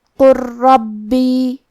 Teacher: ہم حرف اللام کو را میں ملا کے تشدید کے ساتھ یہ حکم کو ادا کریں گے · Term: ادغام